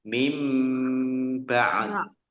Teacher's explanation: nun sukun bertemu dengan huruf ba, bacaan iklab dibaca membalik, nunnya dibaca mim